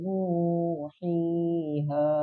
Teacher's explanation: kalau kita baca dari kata nuhiha itu terdapat panjang harokat masing-masing 2. Karena huruf mat ini atau mat tobi, mat asli ini itu dibaca panjangnya ya 2 harokat.